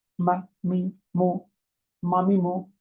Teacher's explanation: দুই ঠোঁটের মাঝখান হতে, কিভাবে? এটা পাতলা ও গুণনা